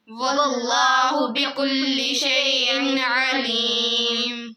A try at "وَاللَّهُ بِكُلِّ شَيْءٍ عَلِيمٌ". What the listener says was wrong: बेटे हमजा के ऊपर आइन नहीं निकालनी शैइन नहीं होता शैइन अलीम होता है वल्लाहु बिकुल्लि शैइन अलीम